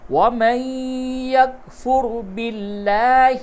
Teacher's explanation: موٹی آواز سے را کو پڑھیں گے